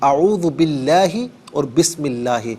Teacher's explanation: اللہ کی جو حرف لام ہے اس کو پر نہیں پڑھیں گے، باریک پڑھیں گے